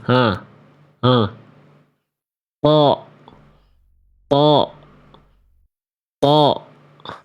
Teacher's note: Ujung lidah huruf th itu disentuhkan ke pangkal gigi atas.